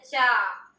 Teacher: तो जब चा बोलते हैं तो हमारा जीभ कहाँ, दांत के पीछे वाला भाग में जाके सटता है, जैसे बोले चा। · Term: चवर्ग